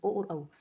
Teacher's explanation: ओ और औ स्वर हैं, इनको बोलते हैं। तो हमारे होठ जो है उनमें भी मूवमेंट होता है और कंठ से भी साउंड आवाज़ निकलता है, इसलिए ये कंठोष्ठ कहलाते हैं।